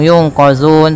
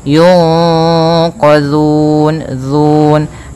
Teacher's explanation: Cara membacanya yaitu suara nunnya disamarkan kepada huruf qaf. Yunqa ditahan, kemudian langkah selanjutnya ditahan gunnahnya. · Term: ikhfa